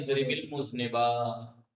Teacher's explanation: اب یہ الگ ہوتا تو ال پڑھ لیتے حمزہ، لیکن یہ حمزہ ہے بھی درمیان میں، حمزہ وصل اور درمیان میں پڑھا نہیں جاتا